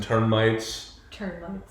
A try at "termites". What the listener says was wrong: I thought you added an extra letter in there. I thought you added an N. You're saying turn-mites.